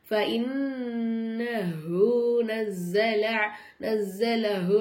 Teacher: அதுவல் லிஜிப்ரீல ஃபஇன்னஹு, நூனுக்கு மேல சத்து இருக்கனால நம்ம என்ன செய்யணும், நூனு நல்லா அழுத்தி உச்சரிக்கணும்